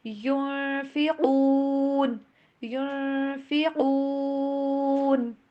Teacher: یہاں پہ یون ایسے نون کی آواز کو اپنے ظاہر نہیں کرنا، ناک میں لے کے جائیں گے، چھپائیں گے آواز کو